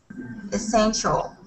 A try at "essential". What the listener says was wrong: Excellent. Nice job.